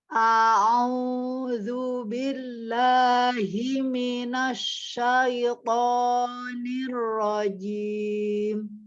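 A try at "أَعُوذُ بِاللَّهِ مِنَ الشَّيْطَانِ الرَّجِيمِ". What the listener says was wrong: Nah, mimnya itu lunak. Tadi ya udah dikasih tahu ya. Jadi jangan dibanting mimnya minas, tidak. Himinas. Supaya apa? Supaya kita untuk tafasi di huruf sinnya itu mudah. A'udzu billahi himinas, tidak himinas. Nah, tidak himinas syaitonir rajim.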